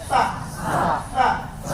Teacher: Terakhir sa. Lidah satukan dengan gigi yang atas.